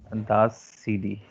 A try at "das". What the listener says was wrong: Say day, not CD. Say day.